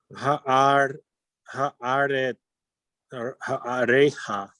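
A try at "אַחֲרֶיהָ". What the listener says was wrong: Switch the aleph and the chet. You're saying cha'a, but it's acha. Acharecha.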